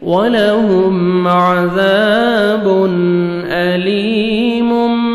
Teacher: अज़ाबुन, अलिफ मद्दा 1 सेकंड ज़ाल को खींचना है और ज़ाल को नरमी से अदा करना है। तनवीन के बाद हमज़ा आ रहा है, हुरूफ़ हल्क़े में से इज़हार करेंगे, जल्दी पढ़ेंगे।